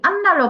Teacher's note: 비읍 니은의 영향으로 미음으로 바뀌었습니다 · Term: 비음화